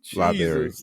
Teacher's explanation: The R in library is gone.